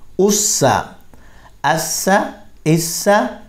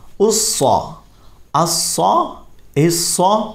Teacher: سین باریک ہے اور صاد پر پڑھا جائے گا